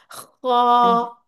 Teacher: जैसे आप गला वगैरह साफ करते हैं ना वैसे इसकी आवाज बिलकुल टॉप थ्रोट से आएगी। फील करना है आपने उंगली रख के खूं ऊपर की तरफ खोलना है। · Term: मोटा